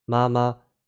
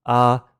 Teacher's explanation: tone one which is the high level tone so you kind of pronounce that like this very high and